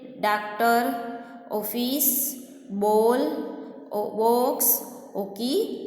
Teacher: इसे विवृत आ कहते हैं. विवृत आ का उच्चारण आ और ओ स्वरों के बीच होता है.